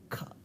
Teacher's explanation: with kha, the place of articulation is still velum, but there is little bit extra flow of air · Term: aspiration